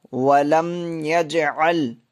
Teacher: میم ساکن کے بعد یا آ رہی ہے، اس لیے یہاں پہ اظہار شفوی ہوگا